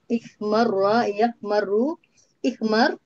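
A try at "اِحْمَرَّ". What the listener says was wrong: Harus bertasdid, tetap dibaca fathah.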